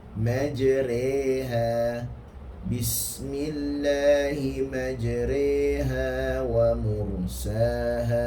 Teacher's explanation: Kalau diamond di bawah, dibacaan imalah ataupun mencondongkan sedikit